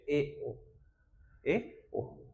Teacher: अर्ध संवृत। आधा बंद। आधा बंद रहेगा।